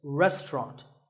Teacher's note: syllable is just ta and the third is rot so restaurant in British English you might hear just two syllables